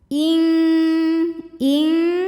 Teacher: maka bunyi nun sukun ini samar-samar siap-siap menuju makhraj huruf Kaf disertai bunyi dengungan jadi bunyinya Eng ya karena Kaf ini makhrajnya jauh dari Nun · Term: ikhfa ab'ad